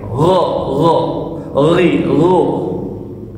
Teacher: gha-nya di tenggorokan, bukan pakai g aja, tapi gh kalau ada pakai gha, gha, ri, ru.